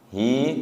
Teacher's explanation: Hi karena diwaqfi. Dua harakat nggih. Tidak terlalu panjang. Tidak hi panjangan.